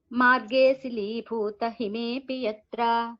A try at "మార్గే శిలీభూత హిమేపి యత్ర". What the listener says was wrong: మార్గే కొంచెం గ్యాప్ తీసుకోండి, సంధి లేదు కదా. మార్గే శిలీభూ అని కొంచెం గ్యాప్ తీసుకోండి, అక్కడ సంహిత ఏం లేదు.